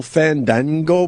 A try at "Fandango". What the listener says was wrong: Fandango. You got to say it right. You got to relax the A.